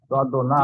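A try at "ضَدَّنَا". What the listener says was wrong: জি জি, হ্যাঁ, দদে, এই যে এখানে কলকলা হয়ে যাচ্ছে কিন্তু, দদ না, দদ না।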